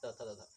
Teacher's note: दंत से हम लोग के तवर्ग के साउंड आते हैं